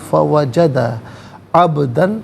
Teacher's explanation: عبدن میں با ساکن ہے لیکن یہاں پر قلقلہ کیا جائے گا، آواز لوٹتی ہوئی محسوس ہونی چاہیے